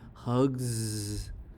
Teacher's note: voiced sound then Z is used for s for example hug here G is voice so we pronounce s as a z as in hugs